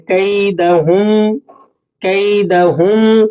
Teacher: کیدہم، یہاں پر ہم پر ہلکا سا غنہ بھی ہوگا۔ کیدہم، ہم، میم ساکن ہے اور اس کے بعد حرف متحرک ہے، تھوڑی سی آپ نے یہاں نون کی آواز ناک میں لے کے جانی ہے۔